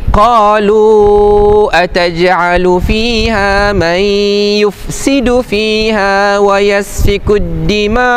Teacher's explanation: Jadi sekarang ni Hamzah ni duduk hujung kan? Dan perasan saya baca enam harakat. Dalam keadaan macam ni saja mad jaiz munfasil boleh dibaca dengan kadar enam harakat.